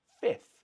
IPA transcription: fɪfθ